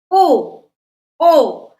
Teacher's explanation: कंठोष्ठ, यानी इसमें कंठ और होठ दोनों। ओ, ओ, आवाज निकलती कहाँ से? कंठ से और होठों से